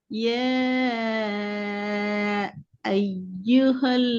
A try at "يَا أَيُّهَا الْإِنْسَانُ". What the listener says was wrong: ஈ வரல. ஈ சவுண்ட்